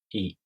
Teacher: You don't round your lips for this vowel. E. In the Japanese vowels, you only round your lips when you pronounce the O Japanese vowel sound. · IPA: [i]